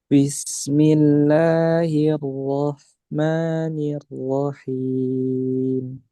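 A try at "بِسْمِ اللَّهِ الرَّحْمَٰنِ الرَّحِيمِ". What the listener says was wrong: Nah, kalau itu lebih. Him. Tak. Coba yang 2 harokat dulu ya. Disamakan dengan la, ma, panjangnya 2 harokat. Nah, dia bisa dipakai 2, bisa pakai 4, bisa 6.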